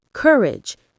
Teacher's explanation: When you pronounce courage, stress the first syllable, courage. Let your voice drop gently at the end.